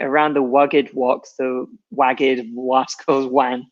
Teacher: there are some people who can't pronounce R's correctly and they pronounce it more as a W